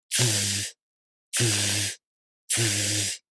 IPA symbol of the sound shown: z